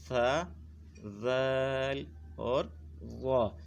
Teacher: زبان کی نوک جب اوپر والے دو دانتوں کے سرے سے لگے گی تو اس سے یہ تینوں حروف ادا ہوں گے۔ یہ آپ یہاں دیکھ رہے ہیں حروف نطعیہ کا مخرج کہ زبان کی نوک جب اوپر کے ان دو دانتوں کی جڑ سے لگ رہی ہے تو یہ تین حروف ادا ہو رہے ہیں۔ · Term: حروف لثویہ